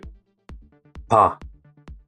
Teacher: close your lips and build up light pressure and release it gently without a puff of air. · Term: soft one